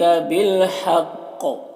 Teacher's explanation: قاف حروف مستعلیہ میں سے پر پڑھیں گے، اور اگر وقف کریں گے تو قلقلہ بھی ہوگا